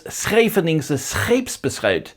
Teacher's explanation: A sound that's quite rare is when you get S followed by that [x] sound, so often spelt SCH.